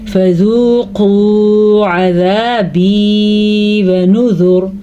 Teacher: فذوقوا، واو ساکن سے پہلے پیش واو مدہ، یہاں بھی واو ساکن سے پہلے پیش، یہ بھی واو مدہ، لیکن قاف کو پر بھی پڑھنا ہے. عذابی ونذر، یہ واو یا مدہ ہے، پہلے بھی میں نے بتایا تھا.